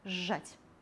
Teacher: Свісцячы «з», шыпячы «ж», свісцячы «з» ператвараецца ў шыпячы. Вымаўляем падоўжаны «ж». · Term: рэгрэсіўная асіміляцыя